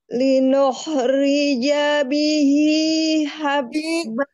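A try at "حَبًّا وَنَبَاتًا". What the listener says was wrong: Lepaskan, Bu. Masih kurang nekan.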